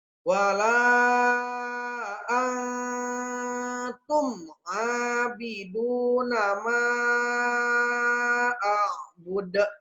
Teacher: Wala ang ikhfa ya. Samar bacanya.